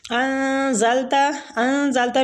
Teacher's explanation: نون ساکنہ پہ اخفاء حقیقی ہوگا، نون کو چھپائیں گے